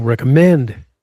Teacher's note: Recommend, stress on the third syllable